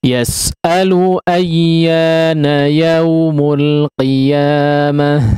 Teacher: ya dan waw bertasydid maka tidak digunnahkan